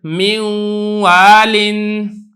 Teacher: اس کی مثالیں آگے دی ہیں حضرت نے، جیسے میں یقول، اب یہ ادغام تو میں کر رہا ہوں لیکن ادغام ناقص ہے کیونکہ صفت غنہ بھی مدغم کی کچھ نہ کچھ ادا ہو رہی ہے